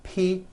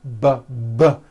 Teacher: the P sound has no voicing and the B sound B B does have voicing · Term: paired consonants